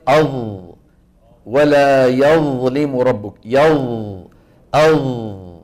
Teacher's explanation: ينحصر الصوت بالحرف المطبق بين اللسان والحنك مثلا الظاء الظاء الظاء انظروا لما يقول القارئ اظ ولا يظلم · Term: الاطباق